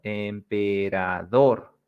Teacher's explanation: So this is dor, where you put the strong part, dor. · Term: sílaba tónica